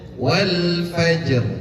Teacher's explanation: Qalqalah dulu, habis itu timbulkan takrir. Takrir itu salah satu sifat yang dimiliki ro. Takrir itu pengulangan.